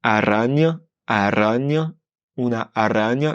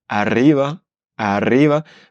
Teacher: quand on a deux R en espagnol, on roule plus fortement. Un seul R, c'est un roulé léger.